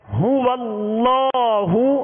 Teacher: اب ہا کا پیش اس کو دراز بھی نہیں کرنا، ہونٹوں کو گول بھی کرنا ہے